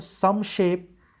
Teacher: यहाँ पर dark spirit में भी जोर पड़ा है और यहाँ some shape, लेकिन अगर देखिएगा तो some shape ये alliteration के जो क्राइटेरिया है उसको फॉलो करता है। शुरू में एस का साउंड है, एस लेटर भी है और बलाघात भी पड़ रहा है, स्ट्रेस भी पड़ रहा है इस शुरू के सिलेबल में